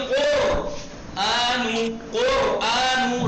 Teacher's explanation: कुर रा को मोटा कीजिए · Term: तफखीम